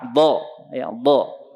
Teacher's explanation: Ini lidah, ya ini sisi lidah, ini ujung lidah ya. Ini sisi lidah kiri kanan. Bertemu dengan geraham atas atau dinding dalam geraham atas. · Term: dhad